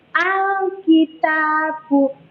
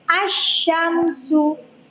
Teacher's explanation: Lidah menyentuh makhraj lam, jelas al kayak gitu. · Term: al-qamariyah